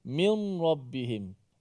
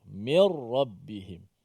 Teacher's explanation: Pelaksanaannya ialah nun tu dimasukkan ke dalam ra. Tanpa ada sedikit pun nun itu. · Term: idgham bila gunnah